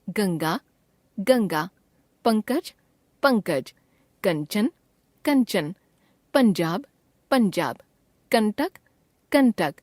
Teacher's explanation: अनुस्वार के बाद जिस वर्ग का व्यंजन आता है अनुस्वार उसी व्यंजन के वर्ग के नासिक्य के रूप में उच्चारित होने लगता है · क वर्ग के व्यंजनों के पहले अनुस्वार का उच्चारण क वर्ग के नासिक्य अंग के रूप में